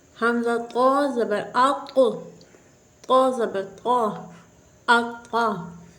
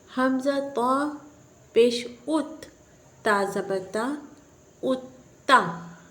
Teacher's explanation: اب چونکہ قا جو ہے حروف قلقلہ میں سے بھی ہے، اس لیے یہاں پر جب ہم ہجے کریں گے تو یہاں جماؤ کے ساتھ قلقلہ خوب ظاہر ہوگا۔